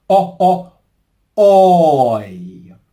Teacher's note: I I The key for success here is differentiating between the starting position of both vowel sounds. So for toy as in toilet, our lips are rounded.